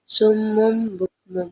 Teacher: sesuatu dari bentuk aslinya cara membaca hukum dengan cara menggantikan atau mengubah huruf nun sukun atau pun tanwin menjadi suara huruf mim sukun · Cara membaca hukum iqlab dengan cara menggantikan atau mengubah huruf nun sukun ataupun tanwin menjadi suara huruf mim sukun. Oleh karenanya ketika nun mati ataupun tanwin akan bertemu dengan huruf ba, maka bibir atas dan bibir bawah tersebut posisinya tertutup dan juga diiringi dengan suara dengan kurang lebih 2 harakat ba.